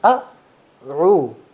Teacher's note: سب سے پہلے حمزہ پڑھنا ہے اور اس کو جھٹکے سے پڑھنا ہے، بالکل جھٹکے، نہیں پڑھنا، او نہیں پڑھنا، او.